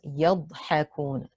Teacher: The dad has a sukoon, but it's preceded by a letter with fatha, so it is heavy on the 2nd scale. The waw is a mud arid li sukoon, extended for 2 or 4 or 6 counts.